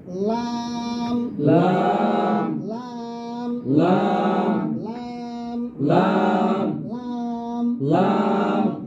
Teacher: সামনের উপরের এক পাশের দাঁতের গোড়ার সঙ্গে লাগাইয়া জিহ্বার আগার কিনারা